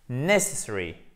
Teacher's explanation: on appuie sur la première syllabe et après, on déplie le reste de la prononciation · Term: accent tonique